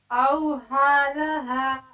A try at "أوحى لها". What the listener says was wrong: ہا نکالیے أوحى لها